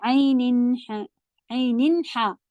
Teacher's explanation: आगे हा आ गया इसलिए अब नून का गुन्ना नहीं होगा